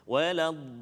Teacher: Jadi ingat mat lazim kalimi muthaqqal 6 harakat.